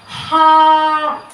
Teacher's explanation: حلق کے درمیان والے حصے سے ادا ہوتا ہے